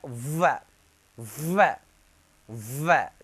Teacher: दांत भी काम करेगा, ओष्ठ भी काम करेगा, व, दंत प्लस ओष्ठ। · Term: दंतोष्ठ